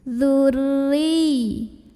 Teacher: huruf ro dibunyikan secara tarqiq karena roknya berbaris di bawah kasrah bacanya tipis pangkal lidah datar lebih ringan